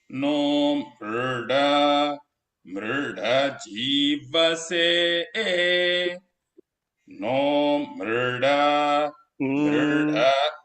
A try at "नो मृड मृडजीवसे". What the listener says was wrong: All of them are anudatas. Mru goes a little lower. No mruda.